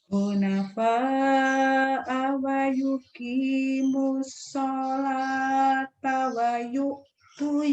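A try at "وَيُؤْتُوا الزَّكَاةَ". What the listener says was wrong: Wa yu'tu yakat ya. Itu Z Bu, bukan ya Bu. Kenapa jadi wa yu'tu yakat? Orang Jawa kekurangannya Z-nya jadi ya. Ini Z, zakat. Bayar yakat fitrah, yakat. J, zakat. Zai.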